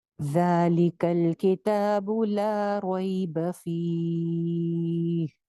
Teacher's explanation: ذال اوپر والے دو دانتوں کے کنارے سے